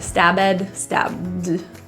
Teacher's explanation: The B and D are pronounced really close beside each other. There is no pronunciation of that vowel E.